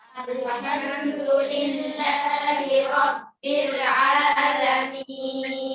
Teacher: ro tebal karena harf ro-nya harakat fathah